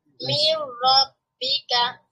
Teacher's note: নুন সুকুনের পরে র র আছে তার মানে এটাও ইদগাম তবে এখানে গুন্না হবে না নুন সাউন্ডটাকে ন সাউন্ডটাকে র সাউন্ডে কনভার্ট করতে হবে